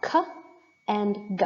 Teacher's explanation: is stopped because it is a stop consonant when you pronounce the airflow stops momentarily in oral cavity before coming out again